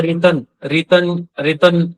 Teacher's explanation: ना भी नहीं बोलेगा बल्कि नासिका से उसकी ध्वनि आएगी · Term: अनुनासिक